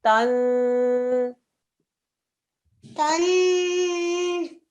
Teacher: Noon mushaddad, so a 2-second nasal sound.